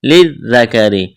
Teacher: ذال کے اوپر تشدید ہے، لام کو ذال کے ساتھ ملانا ہے، پلس کرنا ہے، ذال کو نرم کرنا ہے۔